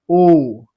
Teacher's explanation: और इसको आप लोग जब कंठ और ओष्ठ पहचान गए, तो कंठ ओष्ठ से बोलिएगा, तो कंठ ओष्ठ से क्या होगा, ओ और औ, कंठ, और देखिए ओ, यहाँ पे घरघराहट हो रही है, और हमारा ओठ भी क्या हो जा रहा है, सट जा रहा है, ओ, नहीं, उसी प्रकार औ, है ना?